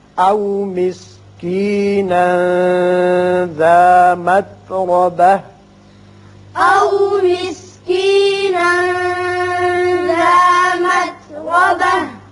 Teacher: او مسکینا یہاں اخفا ہوگا، ذا متربہ را پر ہوگا